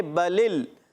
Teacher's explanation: لام کی زیر کو آگے لام سے ملا دیں گے، بلل اگلے لام کو ہلائیں گے نہیں، یاد رکھنا ہے.